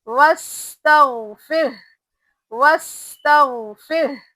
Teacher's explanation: غائن کے اوپر جزم ہے نا، یہاں پہ قلقلہ بالکل نہیں کریں گے